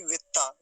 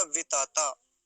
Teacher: बीच वाला जो तकार है वो कैसा है, पूरा है, आधा नहीं है। तो वितता ऐसे बोलेंगे, ना कि वित्ता, वित्ता नहीं होगा, वितता।